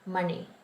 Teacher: it's money with the retroflex na, money. And then quarter past, ekal.